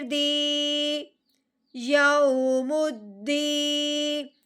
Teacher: یا ساکن، جب یا ساکن ہو اور اس سے پہلے کسرہ ہو یعنی کہ اس سے پہلے زیر ہو تو کیا کرتے ہیں، یا ساکن پہ مد کا قاعدہ جاری ہوتا ہے، یعنی کہ اس کو ہم نے ایک الف کے برابر لمبا کرنا ہے